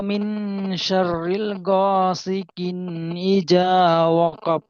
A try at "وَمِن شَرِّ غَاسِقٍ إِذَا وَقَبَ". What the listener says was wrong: জি, ওয়ামিন শার রিল হয়ে যাচ্ছে, র লামজের রিল হয়, কিন্তু এখানে আছে শিন র জবর শার, রজের রি, ওয়ামিন শার রি, শার রি